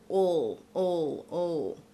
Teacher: So this is when the L is pronounced for a whole syllable. It's a dark L sound, ol, ol, ol. And we make that dark L sound by kind of bringing our tongue back.